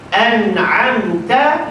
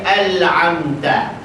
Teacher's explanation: Sebab makhraj huruf nun dengan lam dekat. Nun dekat langit-langit, tolak ujung lidah. Lam ujung lidah dekat gigi kapak dengan gigi taring.